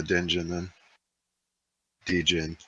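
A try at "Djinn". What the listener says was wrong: Jin. The D is silent.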